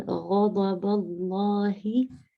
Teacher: the ghain is from the upper part of the throat, and the ha in Allahi is from the lower part of the throat.